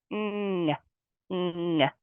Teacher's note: the ng sound spelled with ng is a single sound. Again, you don't pull that apart. Ng, ng. It's said in the back of the throat.